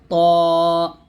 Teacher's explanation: করতে হবে তা টা পাতলা ভাবে উচ্চারণ করব দালটা শক্তভাবে আর ত টা মোটা ভাবে উঁচু আওয়াজে উচ্চারণ করতে হবে এটা হবে তা দা ত এরকম ত উচ্চ আওয়াজে উচ্চারণ করতে